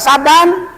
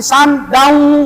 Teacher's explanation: Ada tanwin patah, ke depan ada waw, namanya idgham bigunah.